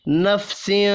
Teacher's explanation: یہاں تنوین کے بعد شین ہے، اخفاء حقیقی ہوگا